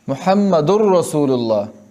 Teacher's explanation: तन्वीन में जो नून है उसको रा से बदल के रा ही पढ़ेंगे, नून खज़फ हो जाएगा, ख़त्म हो जाएगा। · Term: इदगाम बिला गुन्ना